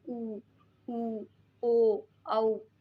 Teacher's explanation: वृत्ताकार यानी कि जिनको बोलने पर हमारे मुंह की आकृति गोलाकार या वृत्ताकार हो जाती है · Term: वृत्ताकार स्वर